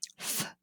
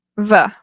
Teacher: and the lowercase v v these are both labiod Dental fricatives the difference is that the f is voiceless and the V is voiced